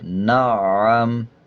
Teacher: عین کے اوپر شد ہے، جب نون کو عین کے ساتھ ملائیں گے تو مضبوطی کے ساتھ ادا کیا جائے گا، وقف کرتے ہوئے میم کا زبر سائلنٹ کر دیں گے